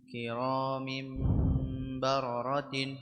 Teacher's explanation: عين تنوين بالكسر منقلب لميم المخفى عند الباء المفتوحة بغن حركتين